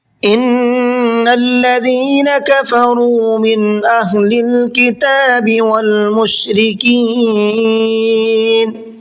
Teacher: نون میں غنہ کریں گے اس لیے کہ نون کے اوپر تشدید ہے